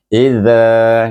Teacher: huruf zal itu di ujung lidah, gigi kacip di situ. Mesti keluar ujung lidah. Tak keluar bukan zal.